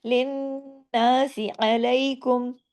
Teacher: واؤ مدہ ہے، باقی سب پے کی حرکت ہے، لن ناسی، نون پہ تشدید ہے، نون پہ غنہ ہوگا